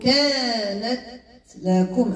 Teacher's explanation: التاء في انحباس الصوت وجريان النفس